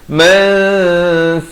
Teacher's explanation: Mansakal, masuk tanpa dengung, daripada mansakan jadi sakal. Mansakal di hujung lidah, liyadhkuru ismallahi ala ma razaqahum.